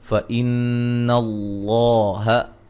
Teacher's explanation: یہاں نون مشدد ہے, غنہ ضروری ہے